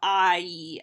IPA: aːiː